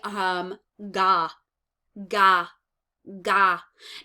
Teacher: the tongue is hitting very far back in the roof of your mouth. So we're going ga, ga.